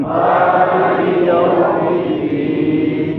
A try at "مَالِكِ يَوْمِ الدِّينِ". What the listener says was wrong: مالک تو نہیں بولیں گے نا انشاءاللہ مالکی بی کے لیول مالکی يوم الدين إياك نعبد اسم ألف مدة إياك نعبد وإياك نستعين اهدنا الصراط المستقيم صراط الذين أنعمت عليهم أن پہ کوشش کریں أن أنا نہ کیا کریں أنعمت عليهم غير المغضوب عليهم ولا الضالين آمين.